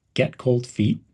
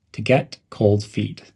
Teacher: cold and feet are pronounced together almost as one word